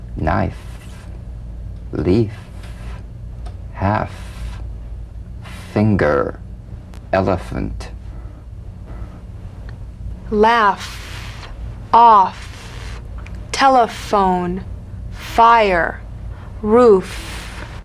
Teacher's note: upper teeth to lower lip just like the V now feel the V then turn off the voice and continue · the F is a cognate to the V the unvoiced fricative la vio dental upper teeth to lower lip just like the